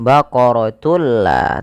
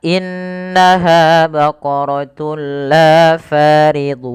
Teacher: Yaitu dengan cara memasukkan tunnya kepada lam dan diganti bunyi suara nunnya menjadi suara lam. Baqaratulla tapi tidak ditahan. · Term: idgham bila ghunah